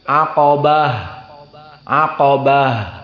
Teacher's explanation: dikatakan ha karena dia makhrajnya berpindah jadi ha dari ta menjadi ha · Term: ha at-ta'nis